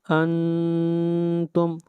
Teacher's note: لا أعبد ما تعبدون لا أعبد ما تعبدون ولا یہاں پر بھی مد منفصل ہے، اس کو 3 الف کے برابر لمبا کریں گے. ولا انتم نون کے اوپر اخفا ہوگا. انتم آواز ناک میں جائے